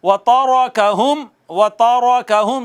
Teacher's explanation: तारका में रा पर ज़बर है तो रा को पुर करके पढ़ेंगे